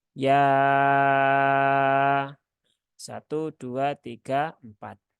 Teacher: adalah masuk dalam Mad Jaiz munfasil ya Mad Jaiz munfasil sehingga yanya itu dibaca empat atau 5 harakat